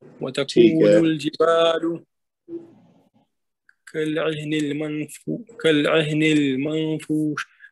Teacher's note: یہ جو نون ساکن ہے اس پہ اخفا کریں گے کیونکہ اس کے بعد حرف اخفا میں سے آ رہا ہے فا